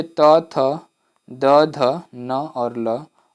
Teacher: जिन वर्णों का उच्चारण ऊपर के दांतों पर जीभ के लगने से होता है उन्हें दंत व्यंजन कहते हैं